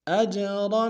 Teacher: اج میں حمزہ کو جیم کے سامنے لانا ہے، اور پھر قلقلہ کریں گے ، اور آ کو تنوین غنہ کریں گے، عین گہرے سے